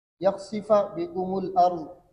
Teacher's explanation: الارض کے اندر حمزہ قطعیہ سے ماقبل لام ساکن ہے، تو حمزہ قطعیہ کا حرکت نقل کر کے ماقبل لام ساکن کو دے دیتے ہیں، حمزہ کو حذف کر دیتے ہیں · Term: نقل حرکت